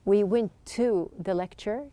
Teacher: You can see that there's just one T sound.